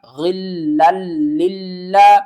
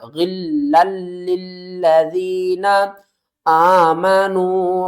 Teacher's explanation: وَلَا تَجْعَلْ فِي قُلُوبِنَا، غین کو لام کے ساتھ ملائیں گے، اور یہاں پر ہم نے گنہ نہیں کرنا کیونکہ آگے لام ہے، لام کے اوپر تشدید ہے